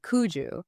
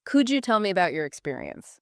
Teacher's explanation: The D and the Y assimilate into the J. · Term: assimilation